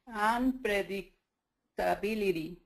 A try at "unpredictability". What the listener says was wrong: It sounds good except for the prrr. Be careful there. Be careful with that PR.